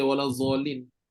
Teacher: orang belah-belah Pakistan India Bangladesh belah-belah tulah Eh belah-belah tu mereka memang baca D ni jadi z